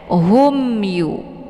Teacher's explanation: Maka ini dinamakan dengan izhar syafawi. Jadi dibaca jelas, tidak boleh didengungkan ya. Humyu. Jadi ditekan saja mimnya ya langsung ke huruf ya tanpa perlu ditahan.